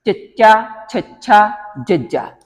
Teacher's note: ਜੀਭ ਦਾ ਅਗਲਾ ਹਿੱਸਾ ਉਹ ਕੋਮਲ ਤਾਲੂ ਤੇ ਦੰਤ ਪਠਾਰ ਦੇ ਵਿਚਕਾਰ ਜਿਹੜਾ ਉਹ ਉੱਪਰ ਸਪਰਸ਼ ਕਰਦਾ ਤੇ ਉਹਦੇ ਨਾਲ ਹਵਾ ਜਿਹੜੀ ਉਹ ਰੋਕੀ ਜਾਂਦੀ ਹ ਇਹ ਕਿਹੜੀਆਂ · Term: ਤਾਲਵੀ ਧੁਨੀਆਂ